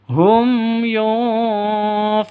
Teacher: Sukun mim bertemu denganmu. Jelas, terpisah; Tidak boleh berdengung, tidak boleh panjang. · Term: Izhar Shafawi